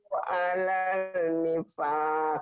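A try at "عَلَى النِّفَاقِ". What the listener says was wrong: Alan, bukan alal. Alan. Alif lam samsiah. Maradu alan nifaq. Qalqalahnya mana? Maradu alan nifaq. Nifaq. Qalqalah kubro. Nifaq.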